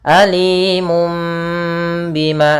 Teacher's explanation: bacaan iqlab iqlab ya itu membalikkan ya membalikkan suara mim Maaf membalikkan suara Nun menjadi suara mim